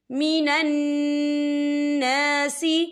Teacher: نون مشدد ہے، یہاں پر غنہ ہوگا، یہاں پہ الف مدہ بھی ہو رہا ہے، خالص سے پہلے زبر ہے، تو ہم اسے 2 یا 3 حرکت کے برابر کھینچے پڑھیں گے.